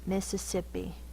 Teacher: it's the long e sound at the end probably due to word origin